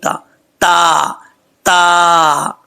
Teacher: اس کا مخرج ہے زبان کی نوک اوپر والے دانتوں کی جڑوں سے لگے تو تا پڑھا جاتا ہے, دو نقطوں والا بریک تا تا تا.